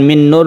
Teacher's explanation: nun mati bertemu dengan Nun ini kita sebut dengan Idgham Bighunnah kita panjangkan kita dengungkan ini disebut juga bagian dari Idgham Mutamatsilain karena Nun itu Sama